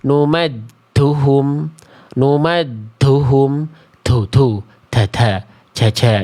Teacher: huruf jim, huruf dal itu biasanya suka ada tambahan-tambahan eh, nafas keluar